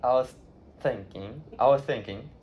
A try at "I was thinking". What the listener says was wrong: No, because now you're doing the th. I was thinking. It's all air. Your tongue doesn't even go through your teeth. Your tongue kind of starts at the bottom of your teeth and flicks up.